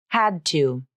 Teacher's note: consonant here because the next word 2 begins with a consonant the tongue tip comes up for the unreleased D and the vocal cords vibrate then the tongue tip remains in contact with the alveolar Ridge · up for the unreleased D and the vocal cords vibrate then the tongue tip remains in contact with the alveolar Ridge as I transition into the next sound